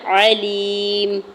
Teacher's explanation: میم کے اوپر 2 پیش کی تنوین ہے، آگے آیت کا وقف ہے، وقف کرنے کی صورت میں میم کو ساکن کر دیں گے